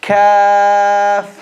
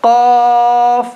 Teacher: Both of them, the back of the tongue is touching the palate. However, the kaf is a light letter and the qaf is a heavy letter.